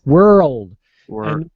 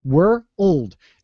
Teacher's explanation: for this pronunciation, I have to hit that R. Pretty hard.